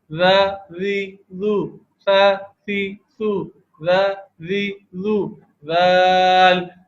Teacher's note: زبان کی نوک اوپر سامنے کے جو دو دانت ہے ثنایا علیہ اس کے کنارے پہ زبان کی نوک لگتی ہے